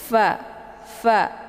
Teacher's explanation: Kemudian fa-nya dibaca pendek, ya. Makharijul huruf fa ini tepatnya di perut bibir sebelah dalam tersentuh dengan ujung gigi seri bagian atas · sifatnya adalah hamas, ada desis anginnya